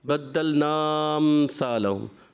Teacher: آپ نے مد کو کیا اور پھر مل گیا آپ کا بدلنا امثالہم، حمزہ غائب ہو گیا. تو ایسا نہ کریں، آپ نے حمزہ کو وہاں پر کلیئر کرنا ہے.